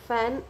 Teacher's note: हमारा अपर teeth ridge जो है टचेस टू लोअर लिप, है ना, तो एफ बनता है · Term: वॉइसलेस लेबियोडेंटल फ्रिकेटिव